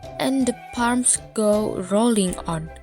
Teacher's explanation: terjadi pengulangan bunyi vokal yaitu O dalam satu baris yang sama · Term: assonance